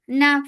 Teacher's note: for fatha open jaws the sound is short